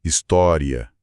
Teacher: Numa fala mais pausada, poética, pode soar com 3. História, um hiato.